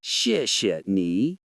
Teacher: The first word falls sharply but politely, and the ni rises gently.